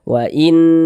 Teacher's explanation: didengungkan tuh suaranya itu kita tahan, kita panjangkan sejenak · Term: dengungan